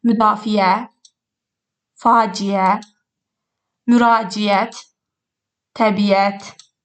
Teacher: Əgər sözdə İ-Ə saiti yanaşı gələrsə, yenə də biz Y samitini onların arasına əlavə edirik.